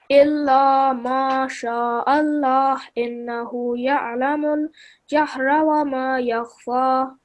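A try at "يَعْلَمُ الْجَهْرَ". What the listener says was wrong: It sounded, I think the first time it sounded a little bit like you said, Innahu ya'lamal jahra, but this you have to say ya'lamul jahra.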